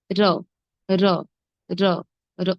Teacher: জিভের অগ্রভাগ মূর্ধায় স্পর্শ করে উচ্চারিত হবে র সামান্য কঙ্কিত হবে র র র র অল্প যেভাবে পুরোপুরি ভাজ